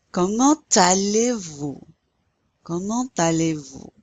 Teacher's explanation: You pronounce that T because it's followed by the A. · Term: liaison